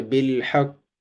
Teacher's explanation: تو جب ہم وقف کریں گے تو زیر کو ہم جزم بنا دیں گے، یعنی کہ یہ قاف جو ہے یہ ساکن ہو جائے گا، تو پھر جو ہے وہ اس کو قلقلہ بھی کریں گے، جیسے بالحق کو موٹا کریں گے، قلقلہ بھی کریں گے اور وقف بھی کریں گے۔ وقف کی صورت میں ہم زیر کو، جو زیر کی حرکت ہے، اس کو جزم میں تبدیل کر دیں گے۔